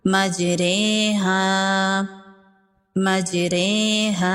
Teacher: زبر اور زیر کے درمیان پڑھنا، نہ زبر لگے اور نہ زیر، اس کو مجہول پڑھنا ہے۔ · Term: امالہ